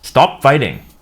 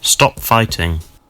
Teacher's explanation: In the word stop, the American O sound is an unrounded vowel. While the British O sound is rounded.